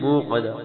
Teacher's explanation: قاف موٹی ہوگی، آخر میں پھر ہا کی آواز